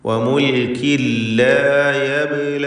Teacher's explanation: വമുൽകിൻ എന്നതിലെ തൻവീനിനെ ലാമിലേക്ക് പൂർണ്ണമായും ലയിപ്പിച്ച് മണിക്കാതെ ഉച്ചരിക്കേണ്ടതാണ്. ഇദ്ഗാം ബിഗൈരി ഗുന്ന.